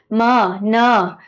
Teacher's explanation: म, न, ये सब नेजल साउंड्स हैं ना, नाक से हवा निकलती है